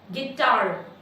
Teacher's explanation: Tar is louder than gi. So that makes tar as a strong syllable and gi as a weak syllable.